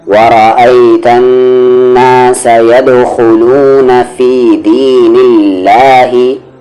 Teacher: اللہ کا لام کیا ہے؟ لائٹ ہے، یعنی کہ پتلی آواز سے پڑھ رہے ہیں